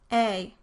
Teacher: the tongue moves from a higher mid-front position toward a high front position